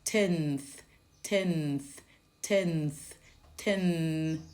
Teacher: So the front of the tongue moves from just behind the top teeth to between the teeth and you blow out